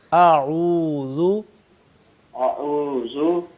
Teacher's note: जी आउजुब्लाह मिन शैतानजीम जी साहब ये जो है ना आऊ आऊ पढ़े मेरे साथ-साथ आप पढ़े आऊ आउ हां आउजू आउजू पहले हमजा फिर ऐन उसके ऊपर पेश है होठ गोल होंगे · پہلے حمزہ پھر عین اس کے اوپر پیش ہے، ہونٹ گول ہوں گے.